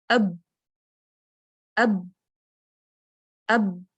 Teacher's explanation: میرے ہونٹ آپس میں بالکل ساتھ جڑ رہے ہیں، جس کی وجہ سے مخرج بلاک ہو رہا ہے، آواز منہ کے اندر دب رہی ہے، ایک پریشر سا کریٹ ہو گیا ہے اس کے نتیجے میں۔ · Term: شدت